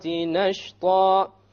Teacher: Nashta, once again, should be heavy because the letter before it is heavy. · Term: heavy alifs